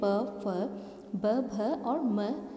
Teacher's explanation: ओष्ठ्य यानी कि होठों से बोले जाने के कारण इन्हें ओष्ठ्य वर्ण कहते हैं, जिसमें प फ ब भ और म वर्ण आते हैं।